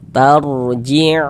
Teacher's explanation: Maka huruf ra sukunnya dibaca tabkhim, baca tebal. sehingga pangkal lidah kita naik terangkat ke atas.